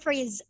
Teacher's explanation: So yes, I have removed and sorry, it becomes is. If you have H, you remove it, and you have his, it's gonna be like is